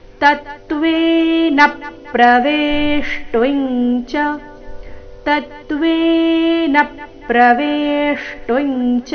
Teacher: ಚರಣದ ಕೊನೆಗೆ ನ ರಸ್ವ ಅದರ ಮೇಲೆ ಆಘಾತ ಕೂಡ ಬರಬೇಕು ಮುಂದಿನ ಚರಣ ಪ್ರ ಸಂಯುಕ್ತ ಅಕ್ಷರದೊಂದಿಗೆ ಪ್ರಾರಂಭವಾದ ಕಾರಣ ತತ್ವೇನ ಪ್ರವೇಷ್ಟಿಂಚ ತತ್ವೇನ ಪ್ರವೇಷ್ಟೊಂಚ